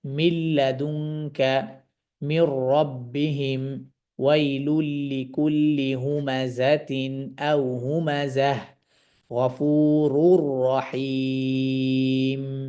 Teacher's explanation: গুন্নার মধ্যস্থতা ছাড়া সরাসরি ইদগামটা আদায় করবে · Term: গুন্না ছাড়া ইদগাম